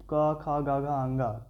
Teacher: पहला तीसरा और पांचवा नंबर का जो वर्ण होता है वो अल्पप्राण माना जाता है